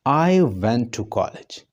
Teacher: तो इसमें मैंने आई के ऊपर जोर दिया, एम्फेसिस दिया, टोन को ऊपर उठा रहा हूँ